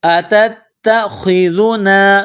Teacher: تا میں سختی کرنی ہے، خا کو موٹا پڑھنا ہے، ذال کو نرم پڑھنا ہے ، اتتخذنا، نون الف زبر نا، قالوا اتتخذنا ہزوا، ہزوا، ہا